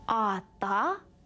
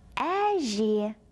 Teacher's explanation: Ата звучит твердо, потому что в нем твердые гласные звуки. Әже – мягкое слово, потому что в нем присутствуют мягкие гласные звуки.